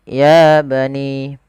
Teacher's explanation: Pada lafal ya bani, di sini ada mad tabi'i pada lafal ya, ditandai dengan huruf ya yang bertemu dengan huruf alif kecil setelahnya. Maka ya harus kita panjangkan sepanjang 2 harokat.